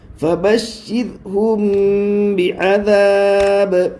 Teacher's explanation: میم ساکین کے بعد با ہے اس لیے غنہ کے ساتھ اخفا ہوگا، اس کو اخفاء شفوی کہتے ہیں ، با کے نیچے زیر ہے، زیر کو جلدی پڑھے، تھوڑا